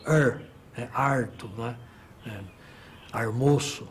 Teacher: o famoso R retroflexo que é típico da área caipira é o er é Arto né é armoo esse é retroflexo